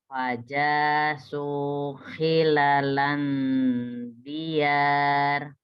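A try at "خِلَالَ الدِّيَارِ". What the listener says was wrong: Kenapa jadi ada nun ya? Oke, khilalanya panjang. Diyar. Roknya ditebelin. Jadi kalau depannya A pasti rok itu tebel.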